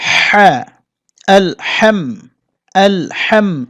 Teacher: হ্যা গলার মধ্যে চাপাতে হবে, এটা কণ্ঠনালীর ভিতর থেকে আওয়াজটা বের হবে